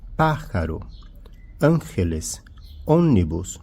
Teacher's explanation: A antepenúltima sílaba pronunciada mais forte. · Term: esdrúxulas